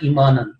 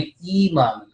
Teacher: یہ جو یا ہے اس کی وجہ سے یہ ای کی آواز جو اس سے پہلے کسرہ ہے اس کو لمبا کرنا ہے. تو آپ نے پڑھا تھا ایمانن، تو یہ ایمانن نہیں بلکہ تھوڑا سا اس کو 2 سیکنڈ اور لمبا کریں ایمان، کیونکہ یا کی وجہ سے جو کسرہ ہے الف جو یہ آپ کی یہ میرا یہ دیکھیں یہ والا یہ یہاں پہ جو آواز ہے یہ لمبی ہوگی تو ایمان.